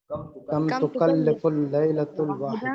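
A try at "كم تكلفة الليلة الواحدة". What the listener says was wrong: کیا زبر جو ہے نا غلط ڈلا ہوا ہے، یہ پیش صحیح ہے، آپ یہاں پیش آنی سے.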